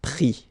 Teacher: final s is not pronounced